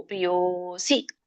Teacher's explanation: ಲೋಪ ಆಗಿರೋದ್ರಿಂದ ಎಳಿಬೇಕು ಯೋ